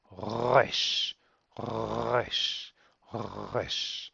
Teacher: The pronunciation is like an R, as in rabbit, let's say, generally, and that's how most English speakers are going to pronounce it. But be aware that this is a semi-guttural sound, and the correct pronunciation, if you really want to be perfect, then you want to try and pronounce it from the back of the throat, like a r, r.